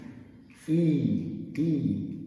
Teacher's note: Quando você isolar e exagerar, você vai ver que os lábios são muito tensos. E a língua é um pouquinho mais alta também.